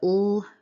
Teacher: the tongue tip makes midline closure with the alveolar ridge, but lateral opening for sound transmission. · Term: lateral liquid